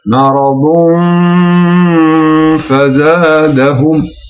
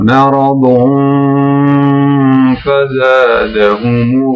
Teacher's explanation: Donc vous voyez les deux dammas, l'une à côté de l'autre, donc je ne lis pas le tanwin, donc il se cache derrière le fa.